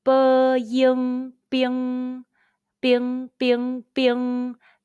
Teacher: Let's combine the initial b, the final, ying, and the high-pitched first tone all together. B, ying, bing.